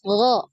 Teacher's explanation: ghain ini dia tertahan aliran nafasnya, makanya ketika di pendengaran ya suaranya itu lebih jelas ya kalau dilihat dari suara.